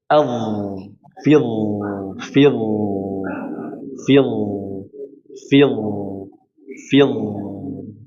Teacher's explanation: ujung lidah menekan ke ujung gigi seri atas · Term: huruf dha